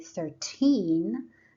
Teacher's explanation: when we say 13, the stress should be on teen, the second syllable.